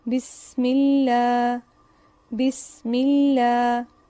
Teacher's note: جب لفظ اللہ یا اللہم سے پہلے زیر ہو تو لام کو باریک پڑھا جائے گا